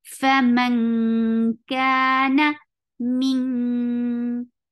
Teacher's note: Faman, this is very this ikhfa blocks the makhraj, so the sound should be faman ka. Ka is two counts long, na short.